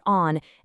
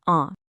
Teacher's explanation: Don't pronounce a hard consonant. Instead, that N or M just changes the vowel before it, sending the sound up through your nose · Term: nasal sound